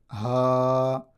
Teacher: حلق کے نچلے والے حصہ سے ادا ہوتے ہیں